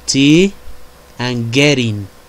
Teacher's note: The manner of articulation is stop. Place of articulation corresponding alveolar, and voices is voiceless.